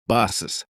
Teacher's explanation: Instead of saying bus softly, make the S sound longer.